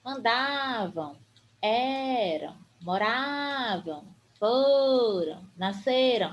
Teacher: essas palavras que são terminadas em AM elas são paroxítonas ou seja sua penúltima sílaba é a mais forte